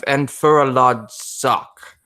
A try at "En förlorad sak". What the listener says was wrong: Except it's not M as in It's N as in noise.